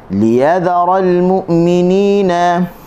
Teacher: Liyadharal, kita tekan di ya. Li kita tak tekan. Kenapa? Kerana kita nak membezakan antara satu kalimah dengan kalimah yang lain lah.